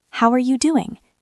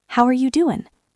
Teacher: that G often disappears, and the sound becomes an N. You have probably seen this written as ing, goin', doin', but it is not just slang. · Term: G drop